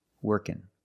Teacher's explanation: So the NG can make the N sound.